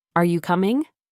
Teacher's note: your voice usually goes up at the end